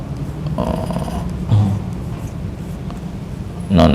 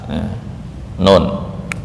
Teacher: Nun ujung lidah dengan gusi atas. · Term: makhraj nun